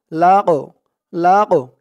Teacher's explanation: লাম ধরবে লাম জবর তল লাম দিয়ে আবার এ কফ ধরবে কফের উচ্চারণটা একটু ধাক্কা দিয়ে পড়তে হবে কারণ কফটা হচ্ছে কল কলার হরফ